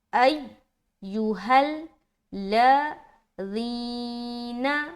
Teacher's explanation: جینا پڑھ رہے تو یہ ذال جیم سے چینج ہو جائے گا